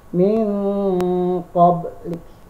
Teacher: Dan yang keempat adalah ikhfa, ialah mensamarkan. Jadi bunyi N-nya disamarkan antara bunyi N dan NG.